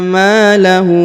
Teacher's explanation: Huruf ma dipanjangkan 2 harokat karena di depannya terdapat alif